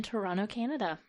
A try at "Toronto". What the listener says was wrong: Not pronounce the T, the second T, Toronto? Toronto. Toronto.